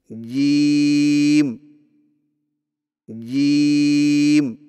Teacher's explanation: जेम की अदायगी में जुबान के दरमियान को तालू के साथ सख्ती से लगाकर बारीक आवाज में पड़े